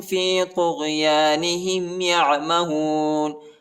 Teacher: عین کو گلے میں پڑھنا ہے، ٹھیک ہے، وسط حلق میں پڑھنا ہے، یعنی گلے کے درمیانی حصے میں